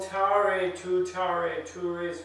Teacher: our english tea is always aspirated